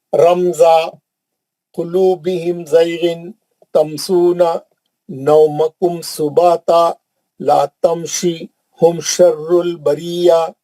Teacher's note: میم کو جلدی پڑھ رہا ہوں, کہیں پہ بھی میم پہ نہیں رک رہا ہوں, غنہ نہیں کر رہا ہوں